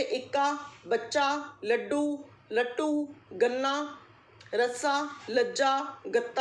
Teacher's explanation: एक ही व्यंजन जब 2 बार प्रयुक्त होता है और पहला व्यंजन स्वर रहित हो तो वह द्वित व्यंजन कहलाता है